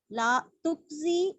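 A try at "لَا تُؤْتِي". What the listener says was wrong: मुझे लग रहा है आप काफ पढ़ रही हैं हमजा के बजाय। काफ नहीं है, ला तुज़ी, मुमिन कैसे कहते हैं? मुमिन ऐसे ला तुजी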